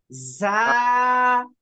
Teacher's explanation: জিম একটু চাপায় বলতে হয়, আর ঝাটা চের চের করে আওয়াজ হবে, ঝা। তারপরে ও, রাল।